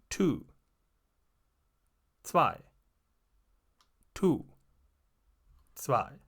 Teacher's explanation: The Z in German is quite often in front and there is no similar sound in English. Try to speak a T and go over into an S. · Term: German Z